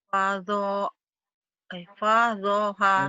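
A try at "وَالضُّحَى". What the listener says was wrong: Wa, bukan fa, itu wa. Wadduha.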